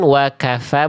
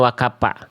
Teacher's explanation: jadi wakafa, keluar angin, wakafa, bukan wakapa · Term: huruf fa